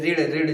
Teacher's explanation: तो ये बोलते हैं मूर्धा से